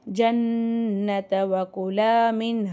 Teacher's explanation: ஜன்னத்தல நூன் சத்தா குன்னா செஞ்சு ஓதணும்